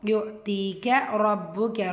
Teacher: ரா ஃபத்தா வச்சு வந்துருக்கு வல்லினமாக ஓதணும். பாஷத்தா இருக்கு அழுத்தம் கொடுத்து ஓதணும்.